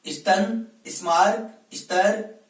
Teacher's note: इनका जब हम उच्चारण करते हैं तो इनके स के साथ में ई की ध्वनि उच्चारित होती है।